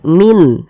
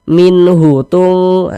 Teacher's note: dibaca jelas tidak berdengung bunyi nunnya kita baca jelas Min jelas n-nya n-nya jelas tidak disamar-samarkan tidak jelas Min kemudian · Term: izhar